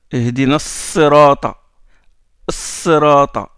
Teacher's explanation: On ne dit pas Al-Sirata. Le Lam entre dans le Sad. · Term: lettres solaires